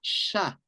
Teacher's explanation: No es una F, es una SHA. Esto es una fricativa palatal sorda.